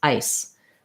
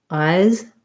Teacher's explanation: So for ice and eyes, the difference is in the final sounds. So ice has the I diphthong and an S, and eyes has the I diphthong and a Z. And so the sound are voiced here in eyes.